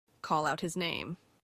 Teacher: that H in the middle of sentences normally not pronounced